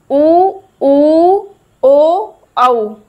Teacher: वे स्वर जिनके उच्चारण में होठ व्रत बनाते हैं। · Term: व्रतमुखी स्वर